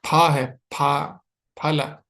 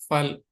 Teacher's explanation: फल फल फल फल फल सही नहीं है। दोनों होठ टच होने चाहिए।